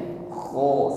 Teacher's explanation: wallahu bimaaluna khir wallahu Bima huruf Ain alirkanun KH huruf ko Ada gesekan di tenggorokan sehingga ada bunyi dengkur